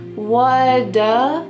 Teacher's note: We just say what. And then instead of saying do with a nice ooh sound, instead it sounds like duh.